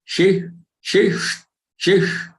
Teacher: The first sh is the palatal one, and the next one is murdhanya, the cerebral or retroflex sh. Sh and sh. Shish, shish, shish.